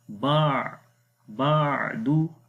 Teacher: If you say Ba, that is Hamza sound then, okay? So you have to release little bit the sound of Ain, as it has a tawassut quality